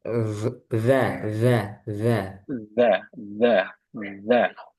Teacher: dikeluarkan sedikit ujung lidahnya sampai ngelewati gigi